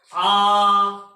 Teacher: विभ्रत स्वर होते हैं इनमें जीभ को नीचे लेकर जाते हैं और मुख द्वार पूरा खुला होता है।